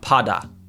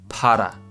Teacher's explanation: Para, ra, like a kind of rolled R sound. Now, if you can't do a rolled R, you can do like a soft D sound. Okay, not like a normal English D, not pada, para.